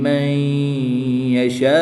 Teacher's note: نون ساکن کے بعد یا حروف یرملون میں سے ہے تو یہاں پر ادغام مع الغنہ ہوگا، غنہ کر کے پڑھیں گے۔